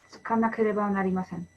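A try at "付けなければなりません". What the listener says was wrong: Excellent, yes.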